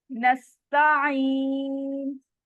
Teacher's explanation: नस्ताइन, यहाँ पे भी आइन की आवाज आपने हलक के दरमियानी हिस्से से अदा करनी है और इसकी आवाज चलती रहेगी, रुकेगी नहीं, ब्रेक नहीं होगी, झटका नहीं आएगा। और यहाँ पर भी या मद हो रहा है, या साकिन है और उससे पहले वाले हर्फ के नीचे जेर है तो या मद हो रहा है, 2 काउंट स्ट्रेच होगा।